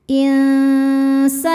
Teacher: Cara bacanya nun disamarkan ke sin disertai dengung. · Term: ikhfa hakiki ausat